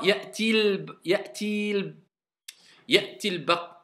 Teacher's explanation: La voyelle longue, on ne la prononce plus. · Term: liaison